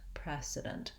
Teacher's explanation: in the word precedent the pre is still the longest syllable i'm still longer on that syllable than i am on the ident precedent i have uh lax vowels in this two unstressed syllables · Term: syllable stress